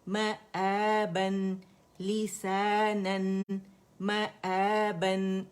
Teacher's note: لیسانن مآبن میم فتح ما حمزہ فتح الف صغیرہ با فتحتین بن. دونوں ہونٹوں کے گیلے حصے میں نے پکڑے با کے لیے، اور نون ٹھیک ہے جو اس میں چھپا ہوا ہے مآبن لسانن مآبن.